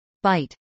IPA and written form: baɪt (bite)